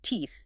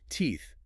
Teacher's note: To make the sound in teeth naturally, the tip of your tongue actually has to leave the inside of your mouth. >> It must come out slightly.